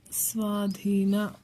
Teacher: ಸ್ವಾಧೀನ ನೀವು ಪ್ರೊನೌನ್ಸಿಯೇಷನ್ ಮೂಲಕ ಇಲ್ಲಿ ನ ಬರೀಬೇಕು ನ ಬರೀಬೇಕು ಅಂತ ತಿಳ್ಕೊಬೇಕು ನಾವಿಲ್ಲಿ ನ ನಾಲಿಗೆ ತುದಿನ ಹಲ್ಲಿನ ಹತ್ರ ತಂದು ಪ್ರೊನೌನ್ಸ್ ಮಾಡ್ತೀವಿ